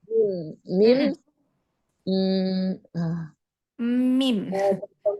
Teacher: Dengan merapatkan kedua bibir disertai dengan ghunah.